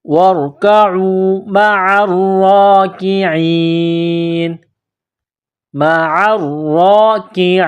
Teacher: جب اس آیت پر سٹاپ کریں گے، وقف کریں گے تو نون کو سائلنٹ کریں گے